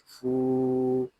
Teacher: یہاں فا کو ہم ایک الف تک کھینچ کر پڑھیں گے کیونکہ یہاں پہ واو مدہ ہو رہا ہے۔ واو مدہ اس لیے ہو رہا ہے کہ واو ساکن سے پہلے پیش آ گیا ہے۔